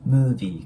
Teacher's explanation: この▁V▁の音っていうのは、下唇の粘膜あたりを上の歯で押さえて、movie。 こんな感じになります。で、その後は▁was▁6▁months▁ago▁なんですけど、このね、months▁ですね。これも日本語で言う▁months、2の音で▁OK▁です。これよくね、monthies▁とかっていう感じで発音される方いるんですけど、そのようには発音しないんですね。なので、そのまま日本語の2のような感じで▁months、months▁になります。6▁months▁ago▁ですね。もう一度通して発音してみると、the▁last▁time▁I▁watched▁a▁movie▁was▁6▁months▁ago。こんな感じに